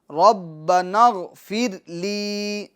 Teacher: را کو پور کریں گے، غین کو پور کریں گے